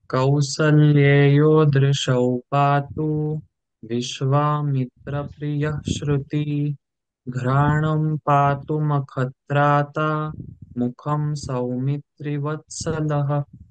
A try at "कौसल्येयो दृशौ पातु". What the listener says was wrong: In the first pada, patu hrasva. There is no dragging. It is not a dirgha akshara. So, kausalyeyo drishau patu.